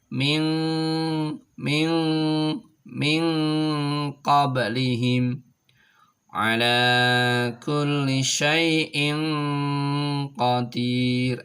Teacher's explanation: Ada di pangkal tenggorokan, maka ketika nun mati atau sukun ketemu dengan ko ini maka menuju ke pangkal tenggorokan sehingga menjadi ang. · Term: ikhfa